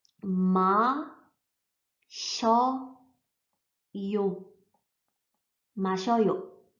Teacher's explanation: S plus I Kombination, die nicht si, sondern sch ausgesprochen wird. Also scho, scho, scho.